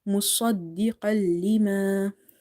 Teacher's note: So swad is heavy, is from the musta'aliya letters